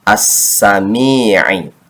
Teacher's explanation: Kemudian mim ya, sukun kasrah mi, dibaca panjang 2 harokat karena ada kasrah yang menghadapi ya sukun, disebutnya mad tabi'i.